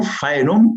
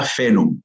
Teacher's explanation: Con lo cual hay una controversia entre los latinistas entre una pronunciación con diptongo, faenum, o una pronunciación con una E larga, fenum